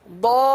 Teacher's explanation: لام پر تشدید ہے لہٰذا لام کو تھوڑا سا رک کر پڑھیں گے